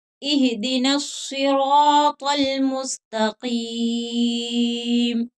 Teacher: را کے اوپر زبر ہے تو اس کو بھی موٹا کر کے پڑھیں گے. طا بھی حروف مستعلیہ ہے اور قاف بھی، تو ان تمام حروف کو موٹا کر کے پڑھیں گے